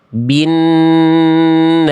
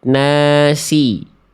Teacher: Ini huruf sin ya karena dia tipis pangkal lidah dia turun ke bawah